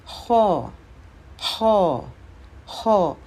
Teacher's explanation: خو موٹا بھی ہے اور حلق سے ادا ہوتا ہے